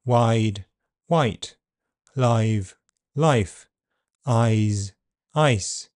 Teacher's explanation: I is a long vowel sound. So it's shortened before voiceless consonants. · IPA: [ʌːɪ], /ʌɪ/